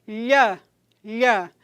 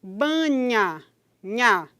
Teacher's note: O som é palatal quando o articulador ativo é a parte média da língua e o articulador passivo é a parte final do palato duro. Quando eu digo, por exemplo, lha, em palha, vejam que a parte medial da língua está se deslocando e batendo lá no palato duro.